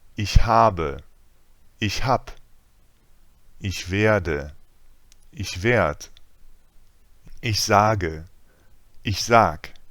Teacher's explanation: what Germans do a lot is drop the ending in the present tense for the first person singular. We do it because it makes the word one syllable shorter than usual. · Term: colloquial shortenings